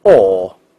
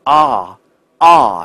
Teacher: 好了，我们继续接下去我们的第二个内容哈。那么，其实刚才我们讲到的是哦，在美语当中的两种异化。那么下面呢，我们来看另外一个很有意思的叫长元音，叫哦的发音。英国人发这个哦这个发音，它是嘴唇要圆唇的，而且音位要朝后啊，不要忘记，音位朝后是英语的发音特点。无论▁British▁English▁or▁American▁English，▁那不论哪种▁accent，▁它一定都是朝后的。所以这个音呢，英国人叫哦。但美国人怎么读呢？你记住，美国人也有两种发音，我们称之为▁O▁的异化现象。但是更多的你会发现呢， 会发音感觉这个嘴巴呢向上打开，嘴巴呢相对来说比较的大一点啊，它的发音的这种上下齿之间的距离会大一点 ，你看，而不是圆唇的▁O，▁而是怎么样上下打开啊啊，是这种感觉。那你会发现，我们通过句子来感受一下